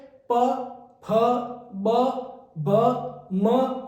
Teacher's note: ओष्ठ्य यानी जो दोनों होठों को मिलाकर जो बोले जाते हैं उन्हें ओष्ठ्य कहा जाता है